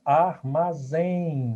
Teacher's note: O M tem um som de I, tá? Ele é nasal porque o som sai pela boca e pelas narinas. Se fosse oral, só saía pela boca. · eu tenho aqui um ditongo nasal decrescente. O M tem um som de I